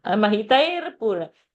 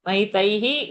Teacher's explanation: say the visarga, stop and complete it